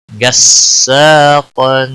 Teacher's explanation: غین بھی موٹا پڑا جائے گا، قاف بھی موٹا پڑا جائے گا